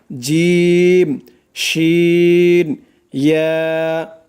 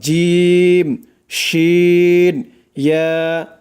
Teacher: জিহ্বার মধ্যখান তার বরাবর উপরের তালুর সঙ্গে লাগাইয়া উচ্চারিত হয় 3টি অক্ষর